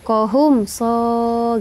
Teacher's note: mim mati bertemu dengan huruf so itu disebut dengan izhar syafawi. Bacanya jelas saja, tak boleh dengung-dengungkan.